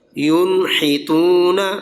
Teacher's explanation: نون کے بعد ہا آ گیا تو غنہ نہیں کر رہے، اظہار کر رہے ہیں